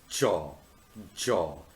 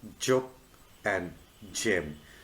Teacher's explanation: the voice palatal is jaw jaw which is the initial sound in the word like joke and gem